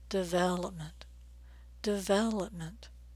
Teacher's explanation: we're stressing the second syllable the vowel sound is a as in red and it's really long and clear development don't say development